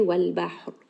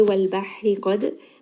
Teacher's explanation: So anytime we have a fatha followed by 2 letters with sukun, and ra is one of these letters, then that ra will become heavy. So because I have stopped, ra now has a sukun, so it is going to be heavy. If you are continuing, it will remain light. Qad, qaf is going to be heavy.